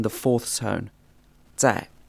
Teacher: this Z or Z sound is almost like a soft TS sound in English and it's in the fourth tone